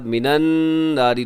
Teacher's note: نون مشدد پہ غنہ ہے، را باریک ہوگی